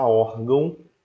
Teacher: na hora que você produz aquela sílaba que recebe o Ti esse ar ele é produzido ele sai exatamente pelo seu nariz por isso foi uma ideia de um som nasal